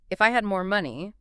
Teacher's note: that first clause often rises slightly,